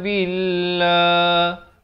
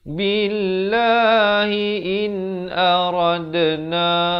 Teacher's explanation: Lafz jalalah di sini dibaca dengan nipis kerana datang sebelumnya baris kasrah